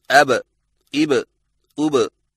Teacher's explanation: जिस तरह गेंद जमीन पर लगने के बाद उछलती है, जिसकी वजह से आवाज में एक झटका सा सुनाई देता है। मसलन हरफे बा पर जज़म आए तो दोनों होंठ आपस में मिलकर अलग हो जाते हैं और कलकला होता है